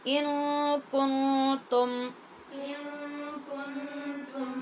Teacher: دونوں نون پہ اخفا ہے غنے کے ساتھ